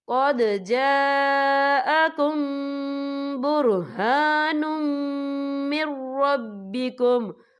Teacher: یہاں دیکھیں قد جاءکم، یہاں میم ساکن ہے، میم ساکن کے بعد جو ہے با آ رہا ہے، تو یہاں پر اخفا شفوی ہوگا، اور ہم یہاں غنہ بھی کریں گے